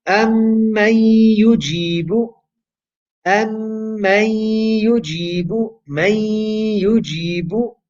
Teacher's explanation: the noon is merging into the ya with gunna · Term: idgham with gunna